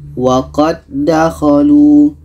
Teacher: Karena ini idgham mutamatsilin. Jadi dal yang pertama kita masukkan ke dal yang kedua.